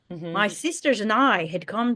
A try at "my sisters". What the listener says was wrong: Moi. Moi sisters. have a little more R there too? Moi sisters.